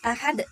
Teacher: termasuk ke dalam qalqalah kubra yaitu dibaca tebal karena berada di akhir kalimat